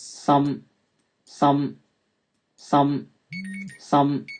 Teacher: you can hear it's an open back vowel